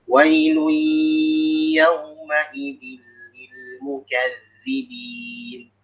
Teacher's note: Seperti tadi contohnya lil mukadzibin, jangan jangan ada tekanan. Zal itu rokhwah ya, dia ngalir.